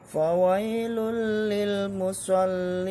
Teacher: Karena dia tidak butuh dengung. Idgham bila gunnah, tanpa mendengung.